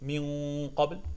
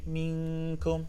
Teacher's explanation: The Qaf is in the back even more, so it's soft palate only, while the Kaf is soft hard palate.